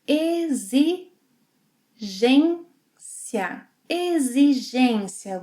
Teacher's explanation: Now the letter X, whenever it is after E and before another vowel, will have a Z sound.